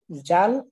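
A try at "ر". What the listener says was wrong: হ্যাঁ, জাল না বলে রাল বলতে হবে, রা, জিহ্বার আগাকে, হ্যাঁ রাল। তার এর উচ্চারণটা হয় রা রি রু, রা রি রু। জাল, গ, জাল, সা, তিনোটা একই মাখরাজের হরফ। রা, আউযু, যেন জু হয়ে না যায়, তখন কিন্তু জিম এর দিকে চলে যাবে উচ্চারণটা আর কি।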